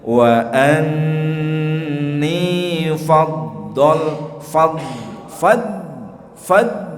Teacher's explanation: Suaranya berjalan dari pinggir pangkal lidah menuju ke ujung lidah, itu suaranya ngeleser. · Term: sifat istitolah